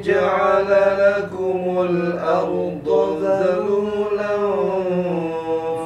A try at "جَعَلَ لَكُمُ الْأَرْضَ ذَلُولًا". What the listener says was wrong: Ada kesalahan mat sikit ya. Ja'alakumul arda zalu. Arda. Langsung saya arda zalu ya. Nanti arda ya. Kelebihan matnya. Tidak ada mat di sini. Tidak ada mat. Yang berlebih tidak ada mat.